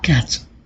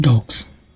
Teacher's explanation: the plural morpheme s sounds like s in cats but sounds like z in dogs